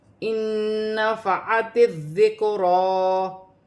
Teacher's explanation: نون ساکن میں غنہ بھی کیا جائے گا اور ادغام ملا کر بھی پڑھا جائے گا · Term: ادغام مال غنہ